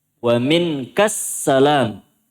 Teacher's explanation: alif lam syamsiyah juga jadi langsung ka masuk ke sin